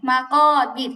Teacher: আচ্ছা দেখেন, এই যে লাস্টের যে শব্দটা এখানে মাকাবির, এখানে র সাকিন তার ডানে জের আসছে, এজন্য রটা পাতলা হবে